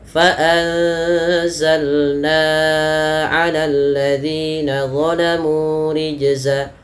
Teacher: Fa anzalna 'alal ladzina zalamu rijza. Ya, antara zi dengan na beda. Na-nya lebih panjang dibandingkan zi-nya.